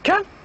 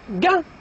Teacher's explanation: the ka is voiceless while the ga is voiced. The ka is velar and the ga is velar as well.